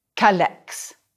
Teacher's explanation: Notice that I dropped the E of que before the vowels.